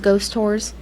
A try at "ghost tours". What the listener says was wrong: Ghost tours? Sounds like you're saying ghost stores.